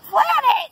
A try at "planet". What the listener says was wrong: No. Not plan, planet.